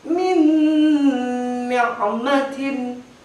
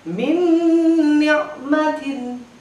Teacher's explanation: Masuk huruf idgham di gunnah setelah nun mati. Maka cara membacanya harus didengungkan. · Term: idgham bil gunnah